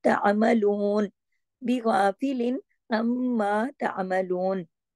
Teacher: क्योंकि मीम मुशद्दद है ना, जब भी मीम मुशद्दद हो गुन्ना होता है, बड़ा अकमल गुन्ना होता है, देर तक आवाज नाक पे छुपती, इसको गुन्ना कहते हैं।